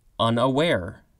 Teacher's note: A metrical foot consisting of two short syllables, followed by one long syllable, or of two unstressed syllables, followed by one stressed syllable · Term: anapest